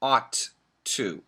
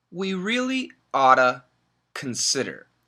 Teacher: if we say it fast, we get that flap T sound, and it sounds like oughta.